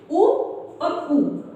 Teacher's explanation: हमारे जो होठ हैं वे एक प्रकार से गोल हो जाते हैं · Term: ओष्ठ